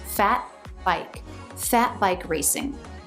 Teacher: to link those two words smoothly we put a stop tee in fat so it's not released